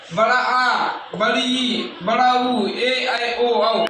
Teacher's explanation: ह्रस्व स्वर से दुगना समय लगे उसे हम क्या कहते हैं दीर्घ स्वर कहते है